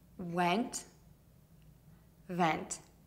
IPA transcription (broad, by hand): wɛnt & vɛnt